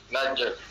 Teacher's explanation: Jadi huruf jim ni huruf qalqalah. Jadi dia kena lantun sikit.